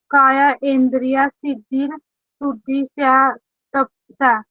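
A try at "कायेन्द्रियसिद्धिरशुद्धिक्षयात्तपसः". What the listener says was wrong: काये, काय नहीं काये, कायेन्द्रिय, काय प्लस इंद्रिय, कायेन्द्रिय सिद्धि सिद्धिर सिद्धिर शुद्धिक्षा तपसः। काय इंद्रिय सिद्धिर शुद्धिक्षा तपसः।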